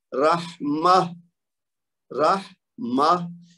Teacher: ویسے تو تا ہے لیکن پڑھنے میں ہا کی آواز آ رہی ہے